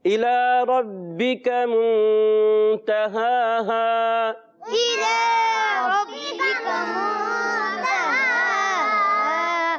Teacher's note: کھڑا زبر آنے کی وجہ سے لام پر ایک الف کھینچ کر ادا کرتے ہیں، کیونکہ کھڑی حرکات حروف مدہ ہی کی قائم مقام ہوتی ہیں. · را پر زبر آنے کی وجہ سے را کو پر کریں گے